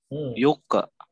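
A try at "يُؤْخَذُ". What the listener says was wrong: Yuko. Kalau yuka. Oh pantulannya O, bukan E.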